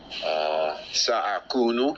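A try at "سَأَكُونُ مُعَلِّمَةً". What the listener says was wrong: Ahsant. Barakallahu fiqh. Ahsant. You see? From your memory. Very good. Very, very good.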